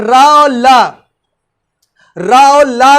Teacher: जिह्वा जो होती दांत में तो स्पर्श करती, जब आप रा और ला का उच्चारण करेंगे तो जिह्वा हमारी दांत के साथ साथ मसूड़ों को भी स्पर्श करती है